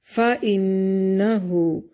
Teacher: نون مشدد پہ غنہ ضروری ہے